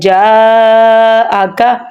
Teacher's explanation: یا ساکن ہے، اس کو بھی ہم لمبا کریں گے، اور جیم کے ساتھ بھی مد ہے اس لیے ہم نے جا کو بھی لمبا کرنا ہے